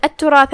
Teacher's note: کلمت التراث میں یہاں تا پہ تشدید ہے کیونکہ اس سے پہلے لام الشمسیہ ہے تو ہم تا کو 2 حرف کی مقدار میں پڑھیں گے. پھر اس کے بعد را ہے اور اس پہ زبر ہے، را کا حکم ہے تفخیم، ہم اسے بھاری آواز میں ادا کریں گے.